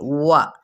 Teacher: پھر ہے واؤ ہونٹوں کی نا تمام گلائی سے، وا. ٹھیک ہے، وا نہیں کہنا.